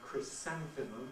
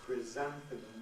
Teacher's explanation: whether people prefer chrysanthemum with a voiceless fricative or chrysanthemum with a voiced one